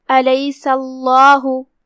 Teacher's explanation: ہم لفظ الجلالہ کو بھاری آواز میں پڑھیں گے کیونکہ اس سے پہلے والے حرف پہ زبر ہے